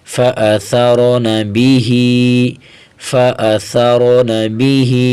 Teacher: با زیر بی، ہا کھڑی زیر ہی. کھڑی زیر کو ایک الف کے برابر کھینچیں گے